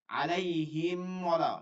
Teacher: আলাইহিম ওয়ালা, মিম মিম হচ্ছে মিমের শুকনা জায়গা, ওয়াও হচ্ছে দুই ঠোঁট গোল করে